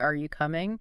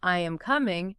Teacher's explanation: Your voice usually goes up at the end.